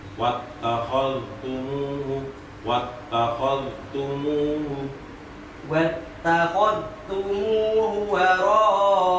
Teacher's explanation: Dalnya yang sukun nggak usah dipantulkan. Wattakhadh memang harus kalem.